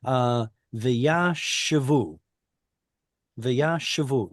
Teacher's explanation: the stress should go on the ooh vowel